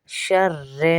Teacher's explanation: را کو پر نہیں پڑھیں گے، موٹا نہیں پڑھیں گے، پتلا پڑھیں گے کیونکہ زیر ہے